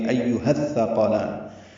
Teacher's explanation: ہا اقصی حلق سے ادا ہوگا، ثا سے ملے گا، ثا نرمی سے پڑھیں گے اور اس پر زبر ہے، جلدی پڑھیں گے، قوف پر پڑھیں گے.